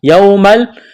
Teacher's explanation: واو ساکن سے پہلے زبر ہے، واولین ہے، کھینچنا نہیں ہے